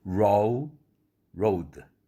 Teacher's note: 과거형이 되는 바람에 O 할 때 O라는 음절 주음이 짧아졌죠. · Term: 이중 모음